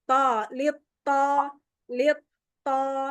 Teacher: To, dia sama dal, ta. Dal, ta, to. Cuman pangkal lidahnya dinaikin.